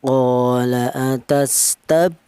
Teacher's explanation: Untuk yang contoh kali ini itu berupa huruf ba dan qalqalah itu ya artinya qalqalah itu ada suara pantulan.